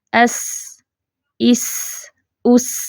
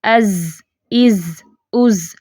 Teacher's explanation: جیسے زا میں دیکھیں از، از، از، لاؤڈ آواز ہے اس کی۔ سین میں کیا ہے؟ پستی ہے۔ زا میں کیا تھا؟ اس کی بلند آواز تھی۔